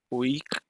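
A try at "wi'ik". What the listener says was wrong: Ok, sería UI. No, es que al final me suena un sonido como de K.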